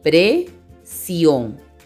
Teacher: La mayor fuerza de voz está en la sílaba sion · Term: sílaba tónica